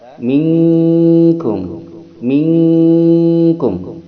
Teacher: Di qaf atau kaf dihadapi nun mati dan tanwin, itulah ikhfa ab'ad. Ikhfa ab'ad itu dengungannya lebih dominan, gunnahnya lebih dominan daripada samarnya. Maka dia berdengung mendekati eng.